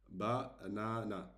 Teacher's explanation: you should prolong on the second a. The second a, you should prolong it.